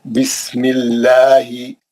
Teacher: ये जेर रहने की वजह से। अल्लाह के नाम से पहले जेर रहेगा, अल्लाह का नाम बारीक पढ़ेंगे।